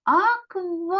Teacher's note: другий склад у нас буде наголошений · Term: наголошений склад